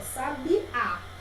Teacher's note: Porque a última sílaba é a sílaba tônica, é a mais forte, ó, sabiá. Então ele vai entrar porque é a sílaba tônica.